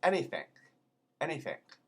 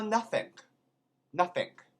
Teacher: Sometimes an ending G becomes like a K.